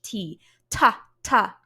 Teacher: when I do it the T sound makes a burst of air come through